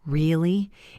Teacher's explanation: If I go down really, it shows agreement or disappointment.